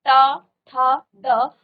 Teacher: आपकी जीभ जो है थोड़ा सा मुड़ जाती है और आपके मुर्धा पर लगती है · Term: मूर्धन्य